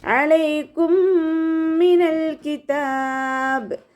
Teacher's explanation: അയിനിൻ്റെ സൗണ്ടിനെ തൊണ്ടയുടെ മധ്യഭാഗത്ത് തന്നെ കൊണ്ടുവരിക.